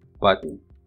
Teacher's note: in the word button the sound na is the nucleus